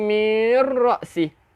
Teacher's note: Jadi tak boleh dengung, tak boleh bunyi mirra'si. Kita masuk terus mirra'si.